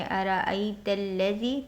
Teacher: ता को सीधे लाम में मिलाएंगे क्योंकि लाम पर शद है, शिद्दत के साथ